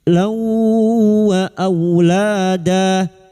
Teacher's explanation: masuk pada huruf wau dan mendengung selama tiga harakat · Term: idgam biguna, idgham bi guna